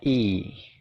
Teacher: bacanya itu I nyengir gitu ya, jadi agak panjang. Suaranya adalah I.